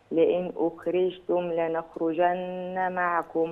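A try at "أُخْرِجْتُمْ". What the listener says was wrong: الجيم كانها شين هي اخرج اخرج سامعه الجيم مني عامله ازاي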